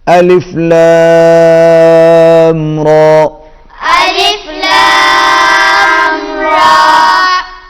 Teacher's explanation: لام کے اوپر مد ہے، کھینچ کے پڑھیں گے